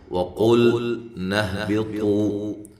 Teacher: قاف کو موٹا کریں، لام کو ہلانا نہیں ہے